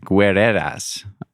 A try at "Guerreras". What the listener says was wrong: But you don't pronounce the U, so you say guerreras.